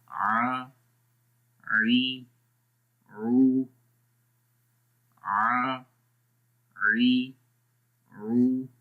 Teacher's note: गले के दरमियान वाले हिस्से से हम इसको अदा कर रहे हैं